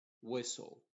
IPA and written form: ˈwɪsəl (Whistle)